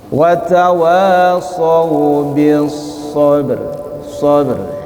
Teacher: yang sughra cara membacanya memantulkannya ringan saja